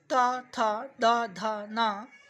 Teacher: दंत से त वर्ग के वर्ण प्लस स और ल। ये भी दंत से बोले जाते हैं।